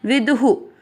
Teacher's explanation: क व दोनों अक्षर पूरे, दोनों में अ मिक्स करेंगे। कवयो विदु, दू में ऊ की मात्रा है, विसर्ग को पढ़ेंगे हु